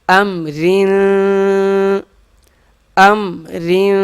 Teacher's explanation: کن، کاف نون پیش کن، تا پیش تو، کن كنت كنت وقف كنت كنت كنت لام سين زبر لس لام سين زبر لس تا زبر تا لست لست وقف لست لست لست حمزہ میم زبر را دو زیر را کے نیچے زیر ہیں، رواں جب پڑھیں گے ہم تو را کو پتلا پڑھیں گے